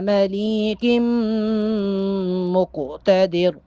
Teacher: قوف چونکہ ساکن ہے قوف پر قلقلہ کریں گے